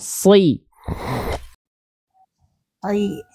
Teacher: Dirasakan huruf shot itu karena dia huruf yang tebal, maka diangkat pangkal lidahnya. Lalu pangkal lidah itu diangkat seperti bunda mendorong lidah bunda ke dalam, ya kayak mau nelan sesuatu gitu ya.